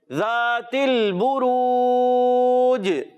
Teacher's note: ذال کی ادائیگی کلیئر رکھنا ہے, زا سے نہیں بدلنا چاہیے اور یہاں لام ہلنا نہیں چاہیے.